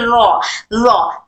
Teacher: सामने का टच होने के बाद थोड़ा सा फ्रंट वाला जो टिप होता है वो वाला टिप थोड़ा सा पलट जाता है।